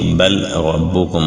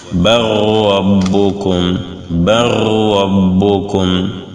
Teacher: Bal rabbukum, on va lire comme si le lam n'existait pas, comme si c'était ra'un deux fois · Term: idgham